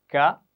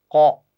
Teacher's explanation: زبان کا جو اینڈ ہوتا ہے نا, جڑ یہاں پیچھے کر کے, بالکل ٹھیک ہے, تو وہ اوپر کے تالو سے لگتی ہے. کاف کے لیے ذرا منہ کی طرف اور قاف کے لیے, موٹی آواز کے لیے ذرا پیچھے کی طرف